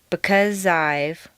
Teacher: In because I've, the Z sound at the end of because and the I sound of I blend together smoothly.